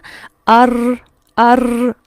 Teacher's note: है ये जो र की साउंड होती है ना अर अर ये जो यह वाइब्रेटरी साउंड जो होती है इसे कहते हैं तकरार यह र का हिस्सा है र की अदायगी में इसका फील